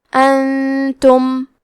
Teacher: کلمت انتم میں نون ساکن ہے، پھر حرف تا ہے، تا حروف الاخفاء میں سے ہے، تو ہم یہ حکم کو غنہ کے ساتھ ادا کریں گے۔